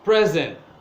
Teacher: they are using the word as an adjective and the stress is on the first syllable